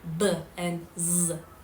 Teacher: If you place two fingers, you cannot feel any vibration, but in the voice sounds, these happen when the vocal chords are together and the air stream forces its way through causing them to vibrate.